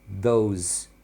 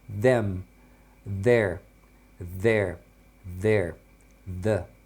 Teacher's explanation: É como se você falasse um D, só que aí você tenta colocar a pontinha da língua ali entre os dentes, falando um d, né? Como se você fizesse um de, tá vendo, ó?